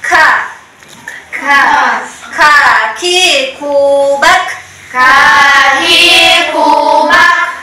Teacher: huruf Kaf ini termasuk huruf hams yang mengeluarkan angin ka k ki kubak k Ki kubak kemudian maksudnya tepi lidah